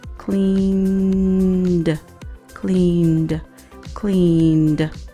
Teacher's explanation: The pronunciation of the ed is d. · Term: d sound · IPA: /d/